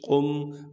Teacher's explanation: قم فانذر، قاف کو موٹا کر کے پڑھنا ہے کیونکہ قاف موٹے حروف میں سے ہے۔ قاف کو پھر آگے ہم میم ساکن سے ملائیں گے بغیر غنے کے۔ قاف میم پیش قم، بغیر غنے کے ملانا ہے، غنہ یہاں پر ہم نے بالکل نہیں کرنا ہے۔